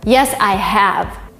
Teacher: Here, have is strong and vivid. It is not weak at all. You have a stress on it.